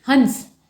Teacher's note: हंस में नाक का प्रचुर इस्तेमाल हो रहा है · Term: अनुस्वार